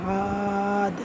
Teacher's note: دال میں قلقلہ کرنا ہے کیونکہ دال جو ہے نا یہ قلقلے والے حروف میں سے ہے